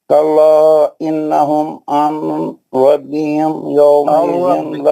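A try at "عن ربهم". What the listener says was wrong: ربہم نون کی آواز نہیں آئے گی. ربہم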